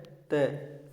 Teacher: यह अल्प प्राण भी है और अघोष भी है।